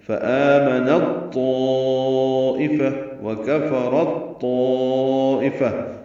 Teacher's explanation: مدغم کر دیا جاتا ہے پہلے حرف کو دوسرے حرف میں، تو تا جو ہے وہ تو میں ضم ہو جائے گا، مدغم ہو جائے گا. · ملانے کی صورت میں نون کو تو سے ملا دیں گے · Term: ادغام متجانسین